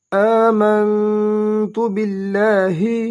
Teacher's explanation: حمزہ کھڑا زبر آ دو حرکات لمبا ادا کریں گے ، میم کو نون کے ساتھ ملائیں گے، میم نون زبر